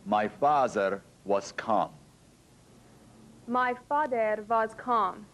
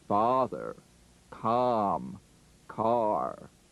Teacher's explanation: The lip opening is too small. We need to pronounce our number five vowels with much larger openings for a big round ah sound.